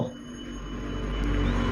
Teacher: ओष्ठ्य, महाप्राण, घोष व्यंजन वर्ण का उदाहरण, दोस्तों ये हो जाएगा भौ।